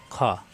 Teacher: কণ্ঠনালীর শেষ অংশ থেকে উচ্চারণ খ মোটা হবে